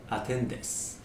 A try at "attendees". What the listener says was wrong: Attendees. Okay, not des, these.